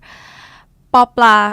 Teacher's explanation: Bobla sound is unaspirated. There's no air coming out.